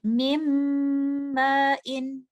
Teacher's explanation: ये जो नून साकिन है ये कंप्लीटली मर्ज हो गया है बाद में आने वाले मुतहर्रिक लेटर मीम में, और जो गुन्ना की आवाज भी आपको आ रही है तो वो लेटर मीम का गुन्ना है। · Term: इदगाम कामिल